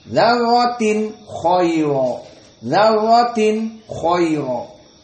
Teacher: Dzarratin tanwin meeting with kha. So idhar.